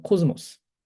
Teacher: 시그마는 이 베타와 델타와 감마와 미 앞에서 즈음가가 됩니다.